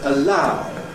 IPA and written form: əˈlaʊ (allow)